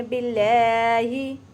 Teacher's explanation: बिल्लाहि बारीक करेंगे लाम को, और थोड़ा सा मजबूती के साथ पढ़ेंगे और लंबा भी करेंगे क्योंकि खड़ी ज़बर है और फिर शद है